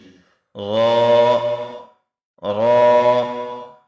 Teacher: Now inshallah discuss about the articulation point 10th, and this is the Ra pronunciate from the edge of the tongue and the point of the roots of the teeth towards the palate. Ra comes out when the edge and the top portion of the tongue touches the gums of the top four front teeth